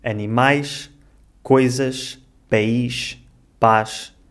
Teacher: quando as palavras acabam em S ou Z, esse som final lê-se sh.